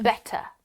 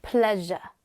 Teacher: >> Some words that have the schwa sound at the end >> end with the letter R. This R is not pronounced.